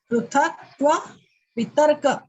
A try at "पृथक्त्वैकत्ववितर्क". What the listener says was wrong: वितर्क नहीं है, पहले पृथक्त्वेकत्व वो एक साथ है। पृथक्त्वेकत्व